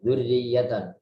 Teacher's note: Walaupun ada kasroh, walaupun ada tasydid, kasroh yang tasydid tetap dibaca tipis.